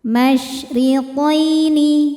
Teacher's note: Masri roho dibaca secara tarqik karena berharakat kasrah maka rnya tipis.